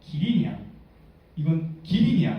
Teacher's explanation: AP의 인토네이션은 두 가지로 나눌 수가 있는데 첫 번째 자음이 그 랜디스와 소노런트일 때, 소노런트라 하는 비음이나 또 그 리을 같은 소리가 되겠죠. 그런 경우에는 그 첫 단어는 낮은 소리가 되고 두 번째 단어부터 높은 소리가 되고요